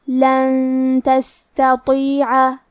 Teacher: کلمت تستطیع تا حروف الاخفاء میں سے ہے، لہذا ہمیں نون ساکن کو چھپاتے ہوئے اور غنہ کے ساتھ یہ حکم کو ادا کرنا ہے